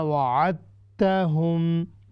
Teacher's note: دال ہم بالکل پڑھی نہیں جائے گی، یہ بالکل ساکن ہوگی، آپ نے سیدھا عین کو تا کے ساتھ جوڑنا ہے، چونکہ اس کا مطلب ہے ادغام کامل، یہ ادغام تام ہے، مکمل ہے، یعنی دال بالکل نکل جائے گی